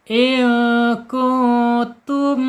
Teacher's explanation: menghadapi selain ba dan mim berarti bacanya izhar syafawi dibaca jelas mimnya